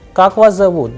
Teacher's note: The person is asking a question. So the sound would go higher at the end.